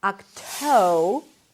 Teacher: Toe is the primary stress, a T sound, then the O as in go. You can make the T a little aspirated so it feels like there is a little H right after.